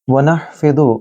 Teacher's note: वनहफिदु, नून को हा के साथ मिला रहे हैं, इस हा को आपने गले के दरमियानी हिस्से से अदा करना है